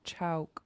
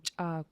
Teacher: I try to only round when I start making a K.